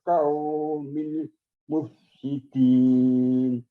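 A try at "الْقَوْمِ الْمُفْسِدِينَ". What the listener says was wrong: Bapak karena kita biasa huruf kaum gitu ya. Jadi kaum satu kaum. Jadi masih ada bekas-bekas memori kita K. Padahal di situ ko di sini. Alal qaumil. Jadi ko dengan K kaum ya agak jadi berbeda kalau ini udah bahasa Indonesia.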